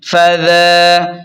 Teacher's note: فا زبر فا، ذال کھڑا زبر ذا، ذال کو نرمی سے ادا کریں اور ذال پر کھڑا زبر ہے تو اسے ایک الف کے برابر کھینچیں